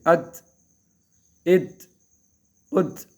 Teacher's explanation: یہاں ات آواز روکنے کی کوشش کریں گے ات ات ات تھوڑی سی جو ہے وہ تا میں قلقلہ کی سی آواز آ جاتی ہے